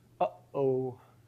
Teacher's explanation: That catch that you're getting in your throat, that's a glottal stop.